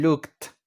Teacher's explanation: No es una sílaba extra, simplemente se le agrega un sonido de t al final.